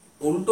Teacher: উল্টো উচ্চারণ করার সময় সেই ল কিন্তু মূর্ধা স্পর্শ করছে। অর্থাৎ ট বর্গের উচ্চারণ স্থান মূর্ধা স্পর্শ করছে এবং আলতো যখন উচ্চারণ করছি তখন এই ল উচ্চারণ করার সময় আমাদের দন্তে কিন্তু স্পর্শ করছে। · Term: উল্টোর ল